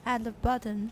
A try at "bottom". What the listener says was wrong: Ba, 不是 bo. Ba, everyone bottom. 那个 T 念 tap 就好了.